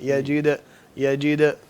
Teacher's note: دال کو ایسے نہ ہو جیسے شد محسوس ہوتی ہے دال کے اوپر, شد محسوس نہ ہو, صرف قلقلہ کرنا ہے